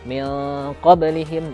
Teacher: kalau ketemu dengan huruf qaf atau ketemu dengan huruf kaf, nah, mungkin bisa lah min qablihim, jadi ada unsur engnya. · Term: ikhfa